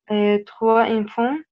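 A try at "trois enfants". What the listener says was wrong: لا، بنعمل ليزون هنا، الاس ما بين دو فويال بتنطق زد. تخوا زونفون،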